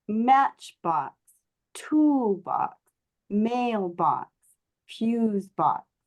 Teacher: we want to put the stress on that first syllable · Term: compound